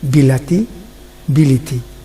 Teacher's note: বি প্রথমে আদ্যস্বর, তি শেষে অন্তঃস্বর, এর ফলে লা মধ্যস্বর লি হয়ে গেছে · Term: মধ্যগত স্বরসঙ্গতি